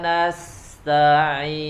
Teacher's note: Huruf ain tidak boleh terputus, suaranya terjeda tapi dialirkan.